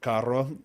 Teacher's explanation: trilling the R is never too hard in the middle of a word like Caro